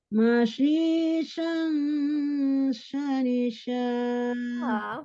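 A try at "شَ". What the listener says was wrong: Fathahnya belum. Itu ke bawah lagi. Mashisha, shanisha gitu. Sha-nya itu nggak sempurna ya. Sha fathahnya. Mashisha, shanisha. Temponya tuh sama. Tidak setelah mashisha, shanisha gitu. Shanisha. Tetap. Kadang temponya tidak terjaga karena kita setelah panjang gitu ya.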